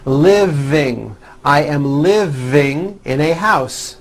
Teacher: yes the v is voiced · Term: voiced v